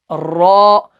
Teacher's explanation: را جو ہے اس کے اندر جو زبان ہے وہ وائبریٹ ہو جاتی ہے، تو یہ زبان جو ہے وائبریشن کے ساتھ ہی جو ہے اوپر والے تالوں کے ساتھ لگ جاتی ہے۔